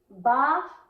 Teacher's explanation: یہ جو با ہے اس کا مخرج ہونٹوں کے تر حصے سے نکلتا ہے، اور دونوں ہونٹوں کو ملا کر با کا مخرج نکالنا چاہیے